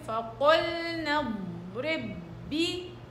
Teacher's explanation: أوصل الباء مدغمة مع الباء فبصير فقلنا اضرب بي.